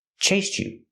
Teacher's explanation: you can make a stop te and say chased you or you can link the sounds and say chase you with a CH sound